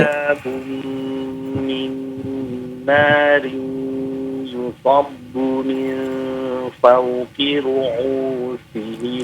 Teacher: Panjang, hamzahnya panjang 2 harokat.